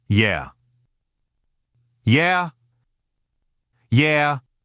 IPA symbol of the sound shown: ja